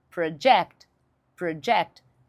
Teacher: se você mudar a sílaba tônica e for para a segunda sílaba, da ênfase na segunda sílaba